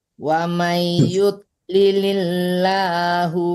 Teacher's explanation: Hati-hati menduang ya, jangan yud. Yud tebal tapi tidak dipantulkan.